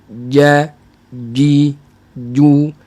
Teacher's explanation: Tengah lidah dia akan ada penekanan sikit